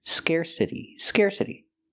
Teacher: We hear the T pronounced like a fast D because it's between vowels.